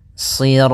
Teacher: shadnya tebal Jangan dibaca dengan huruf Sin